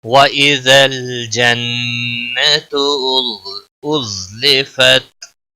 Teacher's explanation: جنت نون مشدد پر گنہ ہوگا